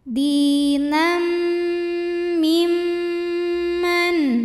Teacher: mim Man mim kedua dihukumi dengan ghunah musyaddadah karena mimnya bertasydid cara membacanya dengung bunyi m-nya tahan sampai ada suara masuk hidup kurang lebih dua harakat · Bunyi M-nya tahan sampai ada suara masuk hidung kurang lebih 2 harokat. Dinam mimman. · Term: gunnah musyaddadah